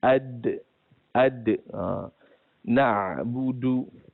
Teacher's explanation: Jadi tempat makhraj huruf dal ada pada di situ. Middin, hujung lidah kita bertemu dengan pangkal gigi hadapan